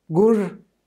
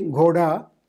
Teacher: voiced aspirated stops merged with unaspirated stops in Dardic. Kashmiri gur horse, but Hindi ghoda.